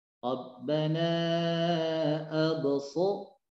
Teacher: Jangan ada jeda antara ba dengan shad. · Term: qalqalah